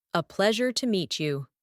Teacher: my tone would be more measured with a falling intonation